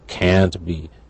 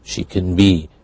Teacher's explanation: So the stress indicates negative or positive in this case. Talking about ability.